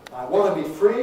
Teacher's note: So in a phrase like, I want to be free, you could get that wanna with no T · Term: NT reduction